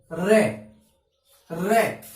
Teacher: उच्चारण करते समय जीभ है वो 2-3 बार क्या करती है? कंपन करती है। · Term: प्रकंपित या लुंठित वर्ण